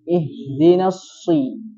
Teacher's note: Huruf sod ketika kasrah tetap tebal